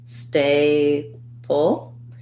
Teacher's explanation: we have an a diphthong stressed first syllable stay pull and then we have a syllabic l so it's